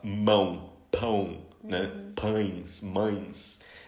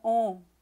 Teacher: eles têm a tendência a pronunciar um som apenas em vez de pronunciar as duas vogais, né? Então, por exemplo, o ão, eles falam on. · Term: ditongos nasais